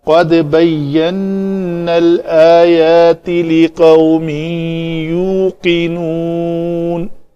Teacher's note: یہ جو نا نون زبر الف نا کی آواز ہے وہ نہیں آئے گی، نون زبر لام نل کر لیں گے